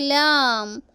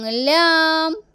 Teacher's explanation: നാവിൻ്റെ തലയും മുൻപല്ലുകളുടെ ഊന്നും